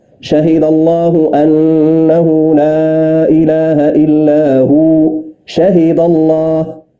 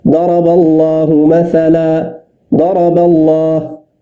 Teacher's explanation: الحالة الثانية إذا سبق بفتح، فتقول مثلا شهد الله أنه لا إله إلا هو، شهد الله، هنا مفخمة لأن اللام جاءت بعد فتح